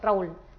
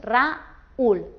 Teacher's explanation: Así que al pronunciarlo no haríamos Raúl, sino haríamos Raúl. Lo separaríamos y formaríamos un hiato y dos sílabas. · al poner la vocal débil acentuada, lo que hacemos es rompemos el diptongo y convertimos la palabra en un hiato. La letra acentuada, esta vocal, aunque sea débil, con el acento la convertimos como en fuerte.